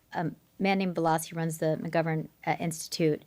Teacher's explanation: he's got intense vocal fry